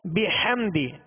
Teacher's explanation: فسبح، آگے ہا ہے، ہا وسط حلق سے ادا کریں گے. بحمدی، ہا کو وسط حلق سے ادا کریں گے. بحمدی ربک، بحمدی دال کو کھینچیں گے نہیں، دال کے نیچے زیر ہے، لہذا آواز کو گرا کر ادا کریں گے.